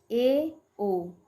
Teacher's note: अर्धसंवृत, half close, मुंह द्वार लगभग आधा बंद हो